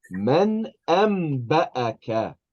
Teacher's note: It's the noon that turns into a meme